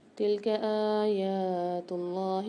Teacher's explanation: تلک آیات اللہ میں اللہ کے لام کو موٹا پڑھیں گے